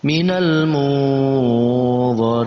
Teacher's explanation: Nun mati bertemu dengan dha, masuk dalam pembahasan ikhfa, maka kita samarkan bacaannya, lalu kita beri eng di antara nun mati dan dha